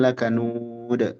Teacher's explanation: Qalqalah pada huruf dal ketika waqaf.